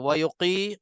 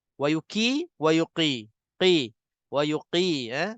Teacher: Jadi tebalkan qaf. Dalamkan sikit ataupun muncung mulut sementara. Wa yuqi. Tapi muncung mulut tu bukannya tak ada kena-mengena dengan makhraj qaf sebenarnya.